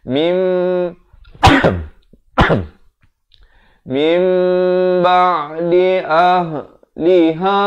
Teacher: Iqlab berarti menukar. Apa yang ditukar? Bunyi nun. Kepada apa? Bunyi mim. Daripada min jadi mim. Tetapi jangan lupa, panjangkan dua harakat. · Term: hukum iqlab